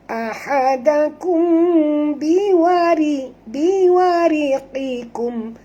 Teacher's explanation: Biwariqikum. Ra sini ra tipis, jangan baca tebal.